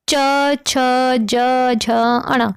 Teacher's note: तालव्य, तालव्य मतलब तालु, ठीक है, इनका उच्चारण कठोर तालु से होता है और हिंदी के च वर्ग का उच्चारण तालव्य से होता है, जैसे च, छ, ज, झ, अण।